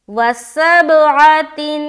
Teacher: با کے اوپر سکون آ رہا، اور با حروف قلقلہ میں سے ایک ہے، تو آواز ٹکرائے گی، وسبعۃ۔ اس کے بعد عین زبر ع، وسبع، تا دو زیر تین، اب دو زیر کی تنوین ہے، اس کے بعد کون سا حرف آ رہا ہے؟